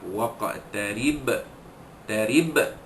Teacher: lantunan kecil pada huruf qalqalah qaf yang mati di tengah kalimah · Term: qalqalah sughra